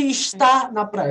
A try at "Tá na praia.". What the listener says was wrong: Tá. Não é está. Eu falo tá, mas eu sei que tem um está ali.